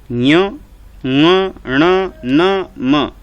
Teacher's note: तो ये पांचों के पांचों जो हैं वो नाक से बोले जाते हैं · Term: नासिक्य